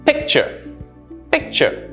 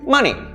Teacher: my stress is on the first syllable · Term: first syllable stress